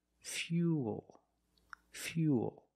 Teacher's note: when you link the o plus the the dark L the mouth opens a little bit but it's not a real syllable it's like this fuel fuel this is fuel and fuel can